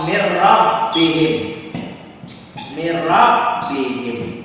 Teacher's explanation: Dimasukkan nunnya ke dalam roknya, huruf pertama tidak dibaca tapi roknya yang dibaca bertasdid mirrabbihim tanpa dengungan. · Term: idgham bila gunnah